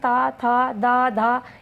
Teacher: हमारी जो जीभ है वो दांतों में जाके छुपती है, इसीलिए इनको दंत्य बोलते हैं।